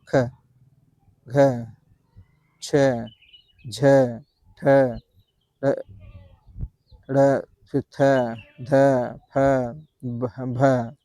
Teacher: तो इनके उच्चारण से मुख से अगर देखेंगे तो हवा ज्यादा निकल रही। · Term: महाप्राण